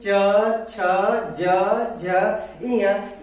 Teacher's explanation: इन सबों का उच्चारण जो है तालव्य की सहायता से होता है